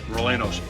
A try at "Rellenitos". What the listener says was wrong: You have to pronounce the R's. Rellenitos. Rellenitos.